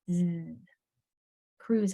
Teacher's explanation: that s in Cruz is making its vibrating sound